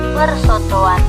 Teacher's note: terjadi penambahan fonem W karena bentuk dasarnya sudah berakhiran dengan fonem O